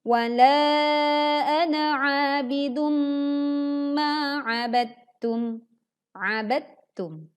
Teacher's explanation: Karena huruf dal dan huruf ta itu dalam satu makhraj, maka langsung dileburkan ke huruf yang kedua, yaitu ta. Saat kita membaca ba, langsung dileburkan ke huruf ta. · lafaz ana ini kita baca pendek saat kita membacanya wasol atau sambung